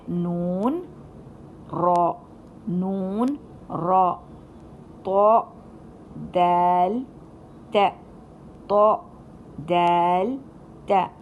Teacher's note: یہ سارے حروف جو ہیں ہماری زبان کے نوک سے ادا کرتے ہیں